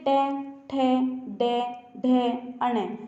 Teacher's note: जब आप ट वर्ग के वर्णों का उच्चारण करते हैं तो आपकी जीभ क्या मूर्धा को स्पर्श करती है।